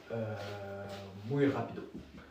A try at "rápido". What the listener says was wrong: Attention, accent sur le A de rápido.